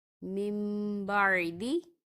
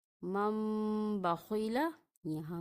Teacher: نون ساکن کے بعد حرف با آ رہا ہے تو ہم یہاں پہ من کی بجائے میم کی آواز نکالیں گے اور غنے کے ساتھ ادا کریں گے۔ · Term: اقلاب